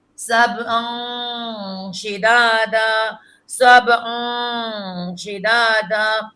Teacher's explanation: نون کی آواز نکلے گی ناک میں